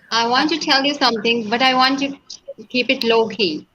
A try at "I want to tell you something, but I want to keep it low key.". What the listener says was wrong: And slow it down there at the end. to make sure that the listener gets that this is secret stuff.